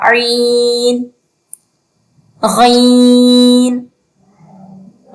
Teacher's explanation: جس طرح ہا کا مخرج ہے اسی طرح جو ہے وہ عین کا مخرج ہے، تو عین بھی جو ہے وہ حلق کے درمیان والے حصے سے ادا ہوگا